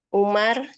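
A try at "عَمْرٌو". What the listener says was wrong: Amr, bukan Umar ya. Kalau Umar itu tidak ada wawunya di ujungnya. Kalau ada wawunya di ujungnya itu Amr bacanya.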